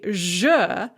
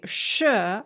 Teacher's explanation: lips in exactly the same position the only difference is that when you say je your adam's apple vibrates and when you say sure your adam's apple does not vibrate